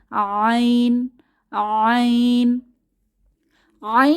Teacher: আইন কণ্ঠনালীর মধ্যখান থেকে বাতাসকে চেপে উচ্চারিত হয়